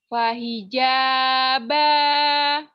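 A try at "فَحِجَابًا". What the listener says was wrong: Fahijaba. Bagus.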